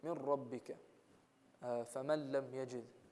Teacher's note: idgham without ghunna, which is merging it but without ghunna